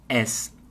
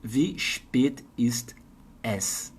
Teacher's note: na maioria das vezes, es. Não é aberto.